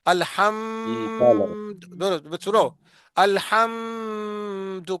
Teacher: کو ناک میں نہ کھینچے مثلا الحمد میں میم ہے نا میم ساکن بھی ہے لیکن یہاں پہ ہم غنہ نہیں کرتے